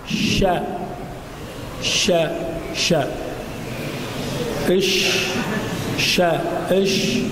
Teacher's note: الشين كذلك من وسط اللسان وما يحاذيه من الحنك الاعلى